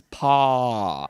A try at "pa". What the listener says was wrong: Now move your tongue forward so it becomes pa.